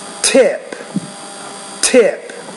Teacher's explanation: you got to pronounce that t with more air for sure